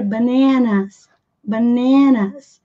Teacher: Vejam que a ênfase está aqui na segunda sílaba